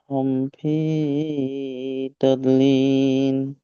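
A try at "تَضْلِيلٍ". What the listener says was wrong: তাও তো লীল লাস্টে লাম হবে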